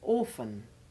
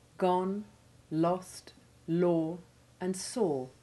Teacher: should be pronounced cleanly as you've just heard them and not as though the vowels rhymed with or